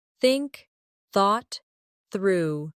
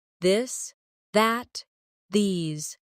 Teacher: Put your tongue between your teeth and push air out for think. For this, your tongue touches the same position but with your voice turned on. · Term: th sound